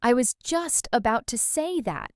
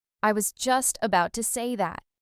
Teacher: The stress is on just and say.